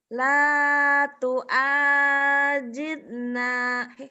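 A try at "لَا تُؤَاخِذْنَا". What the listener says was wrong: tu'a. Tu'ajid. Kho. Titiknya di atas. Ayo ketuker.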